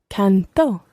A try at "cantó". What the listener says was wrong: Listen to the stress. I sing in the present tense is canto. And in the preterite tense, he or she or it sang is cantó. Canto, cantó.